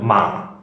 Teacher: One lowers the sound, lowers the pitch. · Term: falling